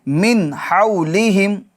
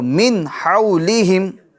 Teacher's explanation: نون ساکن کے بعد حروف حلقی میں سے ہا آ رہا ہے، تو یہاں نون ساکن میں کیا ہوگا؟ اظہار ہوگا، یعنی گناہ نہیں کریں گے